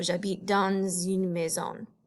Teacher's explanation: you may notice that that S at the end of dans is pronounced